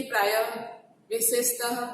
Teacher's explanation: विसर्ग ह का अघोष रूप है। विसर्ग का उच्चारण शब्द के अंत में तथा उपसर्ग के अंत में ह होता है